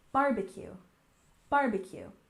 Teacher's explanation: And we stress the first syllable, barbecue, barbecue.